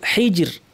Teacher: এই শব্দটা হাইজিরিন, এখানে আমরা থামার কারণে পড়ব হাইজির। এখানে র সাকিন, তার পূর্বে সাকিন, তার পূর্বে জের থাকায় এই রটা কিন্তু থামার ক্ষেত্রেও পাতলা হবে